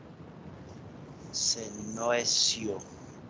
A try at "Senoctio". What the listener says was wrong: No, Senoctio. Es con T, Senoctio.